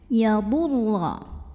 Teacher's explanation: Huruf ro-nya dibaca secara tafkhim karena ro-nya ini berbaris fathah. Maka cara bacanya ro-nya dibaca dengan tebal, pangkal lidah dinaikkan ya. Yadurra. Dan bunyinya lebih mengisi rongga mulut kita ya.